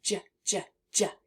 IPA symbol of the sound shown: j